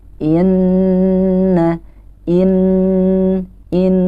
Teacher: hukum bacaan ghunnah itu cara bacanya adalah dengan ditahan dan didengungkan selama apa ditahannya minimal selama dua harokat atau dua ketukan